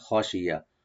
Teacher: হবে এবং কোনো টান নাই এখানে, খশিয়া নর্মাল করে পড়বেন, খশিয়া, খটা একটু মোটা হবে আর ইয়া ওপেন থাকবে